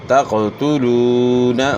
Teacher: پیش ہے وہ مدہ ہے ایک الف کے مقدار کے برابر مد ہوگی